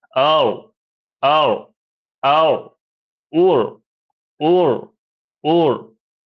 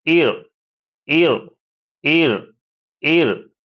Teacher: আর জের আসলে বারিক বা পাতলা করে পড়তে হবে।